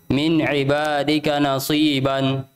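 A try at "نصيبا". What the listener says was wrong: Tebalkan lagi soalnya. Nasi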